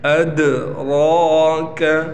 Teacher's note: را کو ہم موٹا پڑھیں گے کیونکہ را کے اوپر کڑا زبر ہے، اور کڑے زبر ہونے کی وجہ سے اس را کو 1 الف کے برابر کھینچا بھی جائے گا